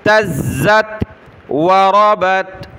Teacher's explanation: زا کو سخت کریں گے تشدید کی وجہ سے